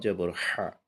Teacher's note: কিন্তু পক্ষান্তরে যেটা আরেকটা হা আছে, সেটা উচ্চারণ করতে হলে আমাকে গলাকে ফোর্স দিয়ে চেপে ধরে বের করতে হবে, সেটা পাতলাভাবে বের হবে। হা জবর হা।